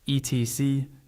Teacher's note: One helpful tip is to stress the first syllable a little more than the second. That means your voice is slightly stronger on Et and a bit lighter on sy